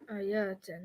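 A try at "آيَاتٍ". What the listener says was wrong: You're making it too long. Is there an alif there? Yatin. Is this a combination? Because the combination needs to be atin. So that's just straight jar. That's just easy jar.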